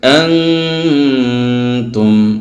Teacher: নুন সাকিনকে গুণনা করে নাকের ভিতরে লুকায় পড়তে হবে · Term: ইখফা